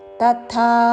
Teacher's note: అల్పప్రాణము తా ముందు తర్వాత మహాప్రాణాక్షము థా